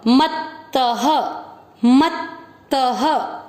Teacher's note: आधे अक्षर को पूरे के साथ पढ़ना है, मत पूरा त, उसके बाद में विसर्ग ह, क्योंकि अ की मात्रा है त में, तो विसर्ग को पढ़ेंगे ह